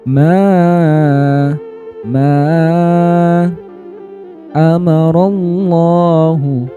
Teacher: pada kata yang berbeda sehingga dibaca mad jaiz munfasil panjangnya dua alif